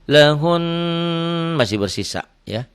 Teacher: Cara mewakafkannya adalah suara hun ditekan dan ditahan 2 harokat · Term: nun bertasdid gunnah